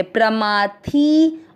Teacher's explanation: थी की मात्रा बड़ी है, इसको खींचेंगे